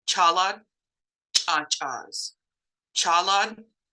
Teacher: the glottalized sea wedge which is a harder CH sound